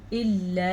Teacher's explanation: مد کو ادا کرنا آپ نے کیونکہ یہ مد 2 سے 3 سیکنڈ تک لمبی کی جانے والی مد ہے